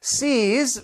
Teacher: you have that long e and it ends with that z sound